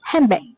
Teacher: the D in hand may change to M due to the influence of the variable B in back resulting in the pronunciation handbag.